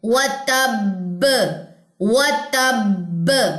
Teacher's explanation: دوسری با کی زبر وقف کی صورت میں ڈراپ کریں گے تو یہاں پہ دو با جزم ہو جائیں گے, تو یہاں پہ اسٹرانگیسٹ کلکلا ہوتا ہے